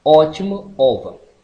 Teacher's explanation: Semiaberta, O agudo, semiaberto, posterior, oral, arredondado,